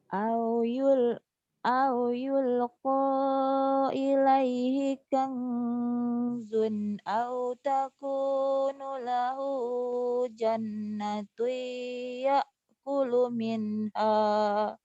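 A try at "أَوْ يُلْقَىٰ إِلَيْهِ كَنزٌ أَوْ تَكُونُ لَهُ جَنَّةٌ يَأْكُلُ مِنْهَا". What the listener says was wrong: Iya, ikhfanya tadi kebanyakan, kelamaan jadi napas nggak cukup ya. Kanzun, satu alif aja. Satu alif setengah.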